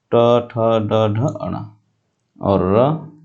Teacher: इनको बोलने के लिए हमारे जीभ को मोड़ना पड़ता है। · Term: मूर्धन्य वर्ण